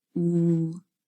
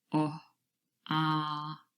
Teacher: oo is a closed vowel sound. The lips are relatively closed, the tongue is more raised, but ah and o, the mouth is a lot wider open and the tongue is lowered. And then in between, not quite in the middle, we have the vowel sound O.